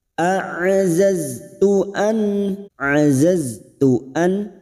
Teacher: nun sukun bertemu hamzah idhar halqi, nun sukun dibaca jelas tanpa mendengung.